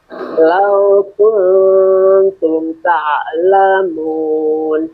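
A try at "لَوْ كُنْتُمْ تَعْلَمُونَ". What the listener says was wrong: Jangan buru-buru. Kuntum ta. M-nya dialirin dulu. Kuntum ta.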